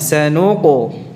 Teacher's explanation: Jadi bunyi qafnya tebal, bukan tipis.